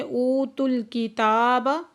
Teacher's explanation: اوتل، او پہ واو مدہ ہے، تا کو لام کے ساتھ ملا کے پڑھیں گے۔ اوتل کتاب، تا کے اوپر کھڑا زبر ہے، دو حرکت کھینچ کے پڑھیں گے۔